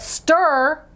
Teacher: that r is controlling that e so it doesn't sound like e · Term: controlled r